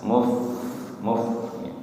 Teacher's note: Bibir bawah menyentuh ujung gigi seri atas